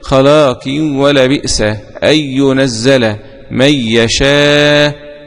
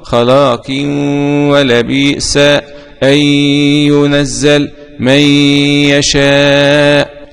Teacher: وقرأ البكون بالفتح: وللكافرين. الإدغام بغير غنة لخلف عن حمزة